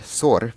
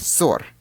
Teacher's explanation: For example, consider the Russian word sor meaning litter with sor meaning quarrel. The way these words are differentiated is through the length of the letter s at the beginning of each word. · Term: Gemination